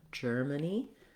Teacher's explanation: The stress is on the first syllable